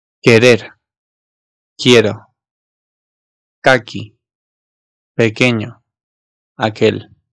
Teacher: U'nun telaffuz edilmeden çıkarıldığı bir sesi veriyor bize.